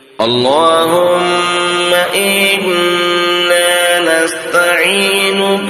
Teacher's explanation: نا یعنی ایک الف کے برابر کھینچ کر پڑھنا ہے